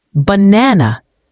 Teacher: in the word banana, the second syllable is stressed.